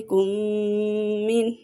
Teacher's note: یہاں پہ ادغام شفوی کا قاعدہ ہو رہا ہے، غنہ ہوگا